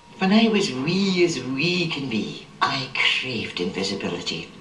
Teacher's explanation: the way you pronounce your r is very different it's smoother and longer · she's not raising her voice at all doing the upward inflection · the type of intonation here in the east is more neutral it doesn't have that distinctive twang that you get in the west